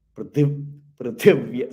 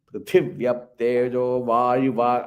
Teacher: Prithiv, but thi you have to give the stress. So you should not give stress in pr.